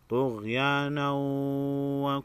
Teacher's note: تنوین کے بعد حروف یرملون میں سے واو ہے ادغام مع عنہ ہوگا